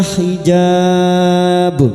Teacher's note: Mad arid li sukun. Empat harakat kita panjangkan dan ujungnya kita pantulkan. Karena terdapat huruf ba yang mati asli dibaca waqaf qalqalah kubra.